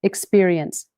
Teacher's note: The stress jumps to the middle.